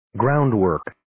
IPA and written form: 'graʊnd,wɜːrk (Groundwork)